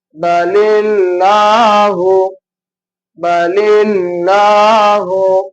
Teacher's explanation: மெல்லினமா உச்சரிக்கணும் அந்த அல்லா அப்படின்ற மாதிரி வல்லினமா உச்சரிக்க கூடாது